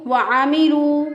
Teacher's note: आइन जो है इसको वस्ते हलक से अदा किया